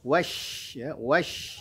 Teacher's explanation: Di situ ada huruf shin bertasydid, maka berikan nabrah tekanan suara kepada huruf shinnya.